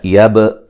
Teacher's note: با کو ہلا کے پڑھیں گے، با قلقلہ ہے